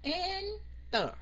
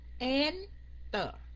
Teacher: Tại vì mình không có nhấn âm cuối cùng, mình đọc là Enter. Mình nhấn âm đầu mà đâu phải âm cuối đâu